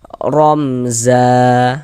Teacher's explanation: Maka kita baca jelas, tak berdengung, baca pendek saja. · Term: izhar syafawi